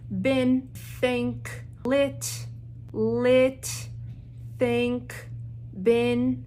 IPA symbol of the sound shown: ɪ